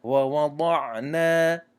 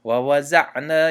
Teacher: حرف الضاد تلفظ شدن دهان پر می شود